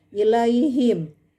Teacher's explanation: Ilaihim ha dengan mim, ha ada di aqsal halq dan mim ada di asyafatan. Karena sudah lintas makhraj maka dinamakan mutaba'idain mutlak karena yang pertama berharokat, yang kedua sukun.